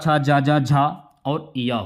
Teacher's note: ये आपके तालु से बोले जाने वाले।